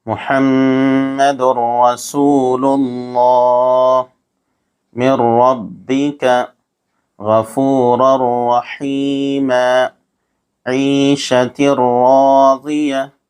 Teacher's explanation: حروف ادغام 6 ہیں: یا، را، میم، لام، واو، نون، جن کا مجموعہ یرملون ہے۔ تنوین یا نون ساکن کے بعد حروف یرملون میں سے کوئی حرف آ جائے تو را اور لام کی صورت میں بغیر غنہ کے ملا کر پڑھیں گے۔ اس کو ادغام بلا غنہ اور ادغام تام بھی کہا جاتا ہے۔